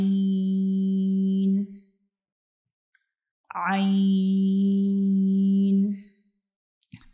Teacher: तो हमारा जो आइन होता है, इसको हम गले के मिडिल वाले यानी दरमियान वाले हिस्से से अदा करते हैं।